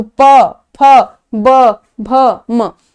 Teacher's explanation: जैसे अगर आप प वर्ग बोलोगे तो प, फ, ब, भ, म, दोनों जो लिप हैं, upper lip and lower lip, दोनों एक दूसरे को टच कर रहे हैं। बिना टच किए अगर बोलो तो बोल लो, ठीक है, इसलिए इसको ओष्ठ्य में रखते हैं।